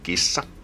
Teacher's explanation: we just have to prolong the S because it's double s